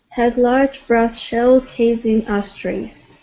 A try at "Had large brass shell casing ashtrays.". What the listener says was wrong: Okay, and so instead of case, it's going to be case. That's an unvoiced S. Casing. So case is case will always have a unvoiced S there.